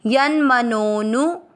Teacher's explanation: आपको नो की मात्रा को लंबा खींचते हुए नू बोलना है। यन मनोनु वी मात्रा छोटी है और धी की मात्रा बड़ी है, तो कैसे पढ़ेंगे? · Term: अवग्रह